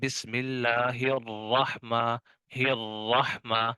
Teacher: جیسے بسم اللہ الرحمن الرحمہ، تو یہاں پر را کے اوپر اگرچہ شد آ گئی لیکن را کے اوپر زبر تو ہے، اسی وجہ سے ہم را کو جو ہے وہ موٹا پڑھ رہے ہیں